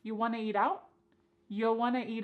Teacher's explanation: And then we have reduced want to become wanna. This is a common reduction in English.